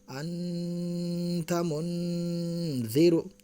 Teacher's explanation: نون ساکن کی آواز کو ناک میں چھپا کر غنہ کے ساتھ پڑھیں گے